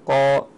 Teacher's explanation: يضغط الصوت فيه الى سقف الفم ويمتلئ الفم بصداه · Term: التفخيم